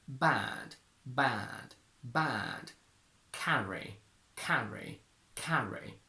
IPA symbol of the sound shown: bæd